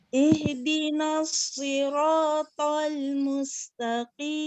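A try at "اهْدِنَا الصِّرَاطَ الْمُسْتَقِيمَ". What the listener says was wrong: Sepertinya kurang tebal, Ustazah. Si. Coba saya perlihatkan dulu ini ya, sod ya. Sod itu seperti apa? Nah, so itu lidah belakangnya, tengahnya nempel langit-langit nggih. Si itu lihat pinggir lidahnya tuh. Ya, pinggir lidah itu idbak. Ya, mayoritas lidah nempel langit-langit. Si as si.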